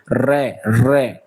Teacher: प्रकंपित यानी कि जिसको बोलने में कंपन होती है। जैसे बोलते हैं र कंपन हो रही है।